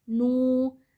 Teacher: ہونٹوں کو گول کر کے ہم نون پڑھیں گے